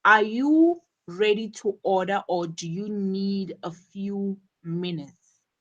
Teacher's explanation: the rising intonation on order and the falling intonation on minutes,